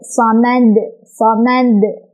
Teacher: Maka jadilah dia qalqalah kubra. Cara bacanya adalah memantul dengan besar pantulannya.